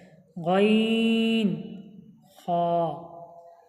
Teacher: গইন খয় মাখরাজ হালাকের বা কণ্ঠনালীর শেষ ভাগ হতে উচ্চারিত হয় গইন খ।